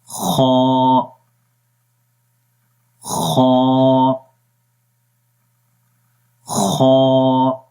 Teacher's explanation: اس کو آپ نے خا باریک نہیں پڑھنا، موٹا پڑھیں گے۔ خا، منہ کھول کر پڑھیں گے